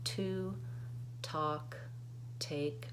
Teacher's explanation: At the beginnings of words, I use what's called an aspirated T. There's a little puff of air that comes out.